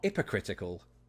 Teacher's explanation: I dropped the H where it shouldn't be